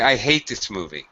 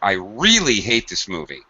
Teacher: When I say really, the part that adds the stress, notice my pitch rises.